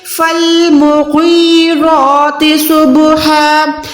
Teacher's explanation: اب یہاں پر را جو ہے کھڑی زبر کے ساتھ ہے تو یہاں پر را موٹی ہے